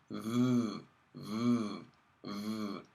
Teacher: If you say v, a voiced sound, you feel a vibration. So this means that the vocal folds actually manipulate the airstream in such a way that we get a nice vibration into our airstream.